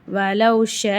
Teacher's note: ஷீன் அலிஃப் மேல பெரிய மத் இருக்கு அஞ்சுல இருந்து ஏழு அலிஃப் வரைக்கும் நீட்டி ஓதணும்